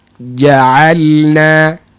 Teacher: Makhraj jim tengah lidah, kemudian pastikan dia tak dilalukan nafasnya. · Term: huruf jim